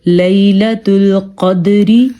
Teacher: لیلۃ القدری، ہم نے قاف کو پر پڑھا ہے کیونکہ قاف حروف مستعلیہ میں سے ہے، اور دال پہ ہم نے قلقلہ کیا ہے کیونکہ دال کتب جدن یعنی کہ حروف قلقلہ میں سے ہے